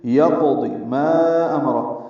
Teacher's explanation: یقض ما امر، ما الف مدہ ہے اور اس کے بعد حمزہ دوسرے کلمے میں آنے کی وجہ سے مد منفصل ہے، ہم اسے 4 حرکات لمبا کریں گے